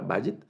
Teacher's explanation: el acento en esta primera, digamos en la primera sílaba, vayit, y esta palabra vayit significa casa.